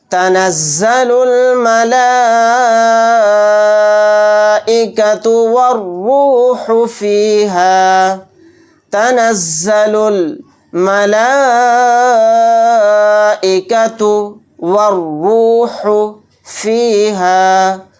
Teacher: اس مد کو 4 الف کی مقدار کھینچ کر پڑھیں گے، اور یہاں پر دیکھیں را کو موٹا یعنی پر پڑھیں گے